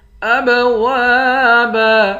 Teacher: حمزے کو با کے ساتھ ملا کر با پر قلقلہ کریں گے۔ واو کے بعد الف ہے، الف حروف مدہ ہے، ایک الف کے مقدار کھینچ کر پڑھیں گے۔